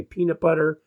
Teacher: if you put your hand in front of your mouth and say peanut butter you can feel the air from your voice as a speaker you know this it'll hit your hand and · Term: plosives